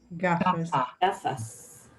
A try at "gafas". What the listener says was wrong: Gafas, sí. Bien.